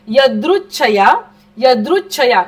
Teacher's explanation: नुसतं छया नाहीये, थोडासा च पण बोलायचंय अर्धा